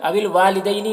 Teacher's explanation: واو میں یہاں پر الف مدہ ہے، اسے 1 الف کے برابر کھینچیں گے۔ دینی، دینی میں یا لین ہے، اسے نرم آواز کے ساتھ جلد پڑھیں گے۔